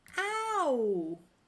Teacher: In ow, we start big and go to small. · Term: slide vowels